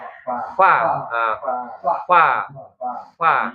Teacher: Bagian bibir yang basah itu namanya perut bibir. Jadi gigi ujung gigi ketemu perut bibir bawah ya. Jadi bukan bibir sama bibir ya.